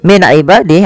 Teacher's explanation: nun sukun bertemu dengan Ain yaitu dibaca dengan jelas Suara nunnya karena dia ada bacaan izhar halqi izhar artinya jelas halqi berarti